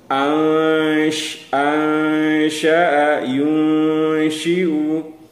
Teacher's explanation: bunyi nun tersamar dalam bunyi sya. Itu cara baca ikhfa hakiki.